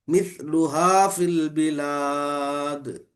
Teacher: مثلها، مث سا کی زبان باہر آنا